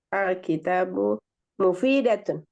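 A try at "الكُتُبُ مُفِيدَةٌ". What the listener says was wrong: Perhatikan, Alkitabu memang tanya panjang. Kalau Alkitabu tanya panjang. Sedangkan di sini tidak panjang tanya. Berarti cara bacanya beda. Al-kutubu. Al-kutubu itu jamak dari kitabun. Jadi al-kutubu mufidatun. Makanya di sini dia perempuan. Kalau al-kitabu bukan mufidatun, tapi mufidun. Tapi karena dia al-kutubu, maka dia mufidatun. Karena al-kutubu.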